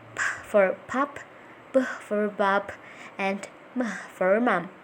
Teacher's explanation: Here is a list of the sounds you will learn today. Bilabials, formed with two lips.